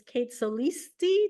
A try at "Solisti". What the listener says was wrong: It's just Solisti. It's a instead of an I.